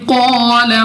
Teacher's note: قاف مستعلیہ میں سے ہے، موٹا پڑھیں گے منہ اور آواز کو کھول کر. الف سے پہلے زبر بھی ہے تو الف مدہ ہے، ہم نے 2 سیکنڈ تک کھینچ کر یعنی لمبا کر کے پڑھنا ہے.